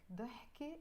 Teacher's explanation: You don't usually pronounce the ت مربوطة, the T sound. But because again it's followed by another noun, you will pronounce it.